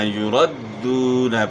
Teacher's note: را کے اوپر زبر ہے را کو اپ نے موٹا ادا کرنا ہے